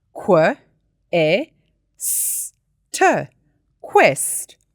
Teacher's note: qu sounds like 2 sounds, k and w. However, the French influence on our English spelling system created the QU spelling for the qu sound.